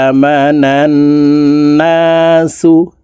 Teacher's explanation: এই নুন তাসদিদওয়ালা নুনের সাথে নাকের বাসি থেকে 3 সেকেন্ড পরিমাণ গুন্নাহ করে ধরে রাখবো।